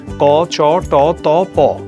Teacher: ব্যঞ্জন ধ্বনিকে ভাগ করা হয় অল্পপ্রাণ ও মহাপ্রাণ এই দুই ভাগে যেসব ধ্বনি উচ্চারণের সময় ফুসফুস থেকে নির্গত বায়ু প্রবাহের মাত্রা কিছুটা কম থাকে তাকে বলা হয় অল্পপ্রাণ ধ্বনি